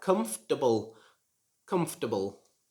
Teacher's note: They try to pronounce the or syllable in the middle, but this should not be pronounced. It should just be like comfortable, comfortable.